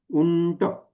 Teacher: ट वर्गीय किंवा मूर्धाला ट ठ ड ढण त तो असल्यामुळे उंटचा उच्चार करताना काय आला तिथे बरोबर ण बाणाचा आला